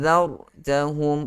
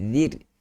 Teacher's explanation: tadi zar tebal, ni zir nipis. Senyumkan, jatuhkan ke bawah kita punya bibir.